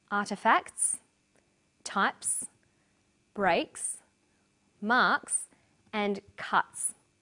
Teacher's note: The second way S is pronounced at the end of a word is s. It's pronounced this way after voiceless consonants. P, t, k, f and th.